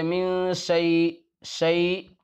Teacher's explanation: تو بہرحال شین کے اندر صفت تفشی ہے، جس کا مطلب یہ ہے کہ شین کے ادا کرتے وقت آواز پورے منہ میں پھیلے گی